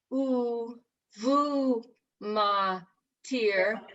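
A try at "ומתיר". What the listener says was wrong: It's a vowel there, so it doesn't get the v. It's just the ooh. Ah, ooh, ma, tir.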